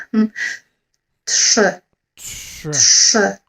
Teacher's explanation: think about the letter t, but just the beginning of it. And then sh. You see the mouth movement for blowing a kiss.